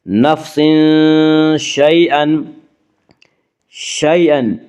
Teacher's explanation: یالین کو نرم آواز کے ساتھ جلدی پڑھیں گے